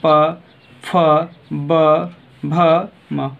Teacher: ऊपर और नीचे वाला दोनों होंठ को बिना आपस में चिपका के ये आवाज़ हम लोग निकाल नहीं सकते हैं। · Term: प वर्ग